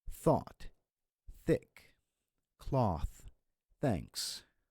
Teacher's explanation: So this is a very soft sound, and it does not vibrate your vocal cords. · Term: voiceless sound